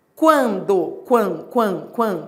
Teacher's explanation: Você tá indo da semivogal pra vogal. É o ditongo crescente.